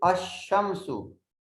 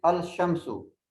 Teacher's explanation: And in the sun letters, the letter L is not pronounced. The correct pronunciation is Ash-Shamsu.